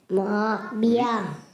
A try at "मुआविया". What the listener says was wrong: बिया नहीं, विया। वी या। हाँ, मुआ वी या।